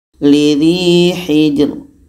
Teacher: Ini dibaca tipis. Pangkal lidah tidak terangkat.